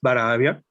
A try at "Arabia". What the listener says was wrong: Arabia, non Barabia, in Asia est. In Arabia littera prima est A, non B.